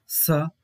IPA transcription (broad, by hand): s